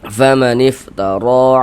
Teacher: ro dibaca panjang, mad tabi'i panjangnya 2 harokat